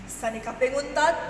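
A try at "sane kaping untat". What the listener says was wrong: Seni jangan pakai kaping ya. Seni keping untat.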